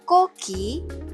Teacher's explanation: Tapi kalau kita bicara koki, maka ke-nya meletup dengan jelas.